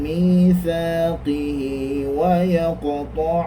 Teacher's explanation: Ini namanya mad silah qasirah. Dibaca dua harakat.